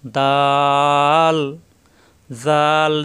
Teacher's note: জাল জিহ্বার আগা দাঁতের আগায় নরম করে।